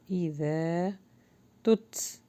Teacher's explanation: یہاں پہ تا کے اوپر جزم ہے تو ہلکی سی ہمس آئے گی